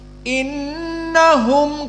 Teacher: Nun di sini musyaddadah gunah